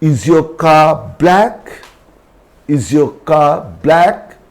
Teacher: Next word begins with a consonant, so R is not pronounced.